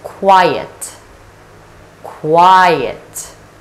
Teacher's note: with qua consonant cluster and I diphthong and there is a schwa the sound sure is the most neutral sound in English and